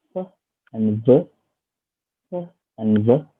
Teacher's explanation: the position is at labiodental, which is at the bottom lip and the front of the teeth.